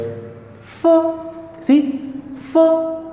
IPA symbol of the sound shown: f